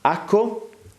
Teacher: Asco es la aspiración de la S, es decir, es la pronunciación de la S en esa posición, se llama posición implosiva, final de sílaba en contacto con una sílaba que abre con consonante.